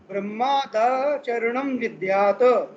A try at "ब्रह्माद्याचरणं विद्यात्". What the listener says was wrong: दा में धा का उच्चारण आता है, वो नहीं आना चाहिए। ब्रह्माद्याचरणं विद्यात्